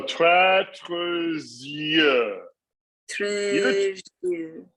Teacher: So the S becomes voiced. So don't try to do an S. It becomes the Z. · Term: liaison